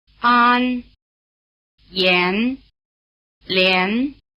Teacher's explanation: after the semivowel, the AN takes on the sound value of EN, as in hen.